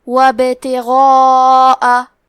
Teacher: البا کو پڑھیں گے، کیونکہ یہاں با پہ جزم ہے لہذا یہاں با کا حکم ہے قلقلہ، تو ہمیں حرف البا کو ہلاتے ہوئے یہ کلمہ کو پڑھنا ہے